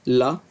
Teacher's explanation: ला को हम पार्श्विक कहते हैं पार्श्विक ध्वनि भी है